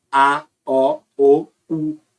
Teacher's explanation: a língua tá indo para trás e ao mesmo tempo ela tá subindo